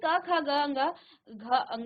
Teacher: आप जब इनका उच्चारण कर रहे हैं तो आपके कंठ से आवाज आ रही है। आपके मुख के अंदर आपके कंठ से आवाज आ रही है। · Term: कंठ्य